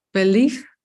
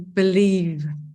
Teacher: So we place our upper teeth on the lower lip, like, and so the v sound has an additional property, and that is that we make our vocal folds that we have in our larynx here, that we make them vibrate. So you make an additional movement with your vocal folds, and you should feel it resonate in your oral cavity if you put your hand here.